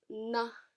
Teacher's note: we then move on to the sound na which is a dental n it's not pronounced the way that we do in english with